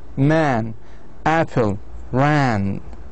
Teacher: This sound is made with a mouth separate wide open and it is found in cat.